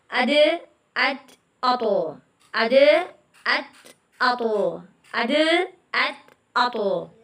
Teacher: जुबान की नोक इन तीनों का मखरज एक ही है। जुबान की नोक सामने के दो दांतों की जड़ से लगे तो यह हरूफ अदा होता है। · زبان کی نوک، ان تینوں کا مخرج ایک ہی ہے. زبان کی نوک سامنے کے دو دانتوں کی جڑ سے لگے تو یہ حروف ادا ہوتا ہے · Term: तलफुल लिसान